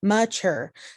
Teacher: see how chur is a little bit more stressed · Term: iams